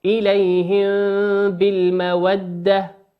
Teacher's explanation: وقوله سبحانه وتعالى تسرون إليهم بالمودة، إليهم بالمودة، الميم هنا ساكنة أتى بعدها حرف الباء، والباء من حروف الإخفاء